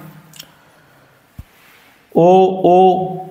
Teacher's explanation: इनका ओष और कंठ से उच्चारण स्थान है